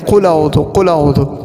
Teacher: لام کے ساتھ ڈائریکٹ حمزہ کو ملا دیتے